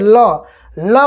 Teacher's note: जैसे आप बोल कर देखिए ल बोलेंगे तो जैसे लगता है दोनों साइड से हवा हल्का सा निकल रहा है, यानी आपके जीभ के दोनों किनारे से हवा बगल से निकल जाता है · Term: पार्श्विक